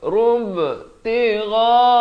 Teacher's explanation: Ghain di hujung kerongkong dengan panjang 4 atau 5 harakat.